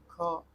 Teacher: वो है घ। घ व्यंजन के उच्चारण में जिह्वा तालु से नहीं टकराती, और घ व्यंजन के वर्ण का उच्चारण स्थान कंठ होता है।